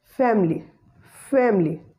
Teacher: The schwa sound after M is silent and it is rather deleted, and word will be pronounced as family, family.